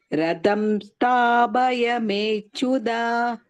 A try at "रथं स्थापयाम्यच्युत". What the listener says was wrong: Ratham, not Radham. And Sthapaya, you are saying Sthabhaya. Mechyuta. सेनयोरुभयोर्मध्ये रथं थम् is second thumb. स्थापयाम्यच्युत. Everything is tha.